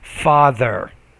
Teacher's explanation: with that th sound you get your tongue between your teeth and then you make it a vibrating sound